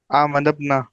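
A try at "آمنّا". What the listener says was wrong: बीच में आप क्या बोल रहे हैं? नून के बाद बे बोल रहे हैं? क्यों आ रहा है?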